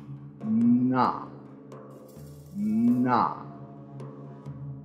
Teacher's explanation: a voiced alveolar nasal and is produced by obstructing airflow in the vocal tract through the nose with either the tip or blade of the tongue at the alveolar ridge.